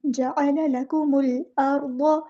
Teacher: جعل لکم، لام باریک پڑھنا ہے، کاف بھی باریک پڑھنا ہے، میم کو ہم نے لام کے ساتھ ملا دینا ہے، حمزۃ الوصل ہمارا ڈراپ ہو جائے گا، اور لام ہمارا یہاں پہ لام قمریہ ہے، اس کو ہم ظاہر کریں گے